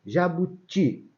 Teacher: o ti é forte a última sílaba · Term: oxítona